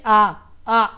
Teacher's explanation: विवृत स्वर वे स्वर हैं जिनके उच्चारण मुख द्वार पूरा खुलता है